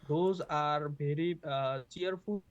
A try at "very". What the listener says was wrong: Again, berry instead of very. So this bv, puffer is a problem.